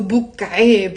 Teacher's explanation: So instead of saying Abu, you can drop the A.